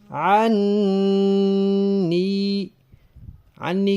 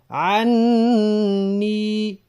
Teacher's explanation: عنی کی یا کی ادائیگی کے وقت بھی آواز ناک میں نہ جائے، عنی نہیں پڑھنا، عنی۔